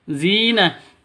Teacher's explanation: Zina dipanjang 2 ketukan karena ada ya mati diawali dengan kasroh. Ada ya mati diawali dengan kasroh, maka dibaca panjang 2 ketukan karena mad asli atau mad tabi'i.